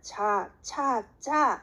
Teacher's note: 하지만 파찰음은 자, 차, 짜 이러면은 살짝 쿵 떨어지면서 마지막에 마찰음이 나와요